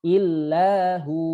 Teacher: Hu 2 harokat menjadi hu, bukan ditekan illahu.